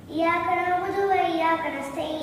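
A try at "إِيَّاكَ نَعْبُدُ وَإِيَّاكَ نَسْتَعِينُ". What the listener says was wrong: அஸ்தக்ஃபிருல்லாஹ், நீங்க தப்பா ஓதுறீங்க. இய்யாக நஅபுது வ இய்யாக நஸ்தஈன். அந்த யாக்கு மேல சத்து வந்துச்சு, அழுத்தி ஓதணும்.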